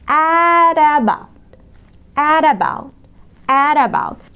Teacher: حرف T قبله حرف متحرك وبعده حرف متحرك the T تنطق flap T D خفيفة